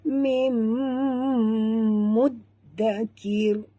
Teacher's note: nun mati bertemu mim, idgham ma'al gunah. Mim, tutup mulut, dengung.